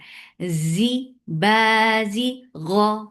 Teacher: Z give buzzing sound in za. For kasra give e sound, and za has z sound. No s sound should be there.